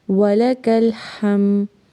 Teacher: واو لام اور کاف تینوں کو تیزی سے پڑھیں گے اور کاف کو ہم نے لام کے ساتھ ملانا ہے۔ ہا کو میم سے ملائیں گے۔